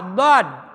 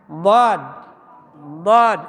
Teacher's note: Ngucapin dod itu simpen lidah di samping lidah ke gigi bagian samping kiri atau kanan ya. Dod atau dua-duanya nempel.